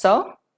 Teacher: Sir is pronounced as sir, with the r being optional.